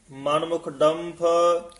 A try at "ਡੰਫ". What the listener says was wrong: ਡੰਫ ਫਫਾ ਬੋਲਣਾ ਹੈ। ਡੰਫ ਫ ਨਹੀਂ ਕਹਿਣਾ।